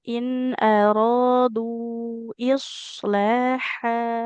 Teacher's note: Coba dari in aradu ibu huruf shadnya tebal.